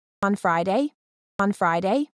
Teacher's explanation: the pitch goes up at the end she's asking